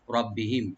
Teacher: আর এখানে আমরা থেমে যাবো, এখানে থেমে যাবো, ওয়াকফ করার এখানে উপর চিহ্নটা আছে, এই চিহ্নটা থাকলে এখানে ওয়াকফ করতে হবে। রব্বিহিম, আর মিমে কোনো গুণা হবে না